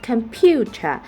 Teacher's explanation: the primary stress fall into the second syllable pu, which receives the strongest stress